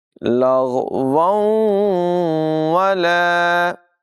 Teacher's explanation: دونوں واؤ جو ہے ان کو ملا کر پڑھیں گے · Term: ادغام